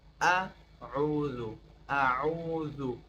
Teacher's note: دوم عین از مابین گل و کمکی مابین گلو را فشار میدیم